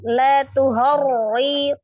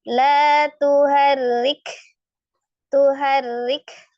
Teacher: berarti ro kasroh dibaca tipis.